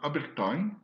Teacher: Et puis en Werni, qui est une langue de la même famille que le Ko, on a Abertang, avec cette fois-ci un A épinthétique au début